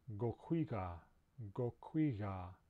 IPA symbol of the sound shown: ɣ